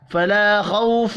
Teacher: فلا خوف، یہ بھی الف مدہ ہے، 1 الف کے برابر کھینچ کر پڑھنا ہے، خو کو پر پڑھنا ہے، خو واو لین ہے، تنوین کے بعد عین ہے، اظہار حلقی ہوگا، غنہ نہیں ہوگا۔